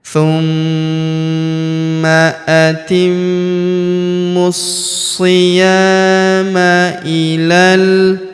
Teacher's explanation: Huruf ya kita panjangkan dua harakat karena terdapat alif di depannya.